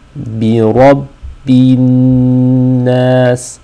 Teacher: there's a shadda on top of the noon, which means we want to do غُنَّة. We want to have a nasal sound